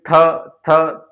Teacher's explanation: आगे का भाग जो है जीभ का आगे वाला हिस्सा हमारे आगे वाले दांतों से लगता है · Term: दंतीय